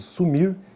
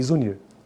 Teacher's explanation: O de S, que seria o S, não é sonoro, ó, e o de Z, o de zebra.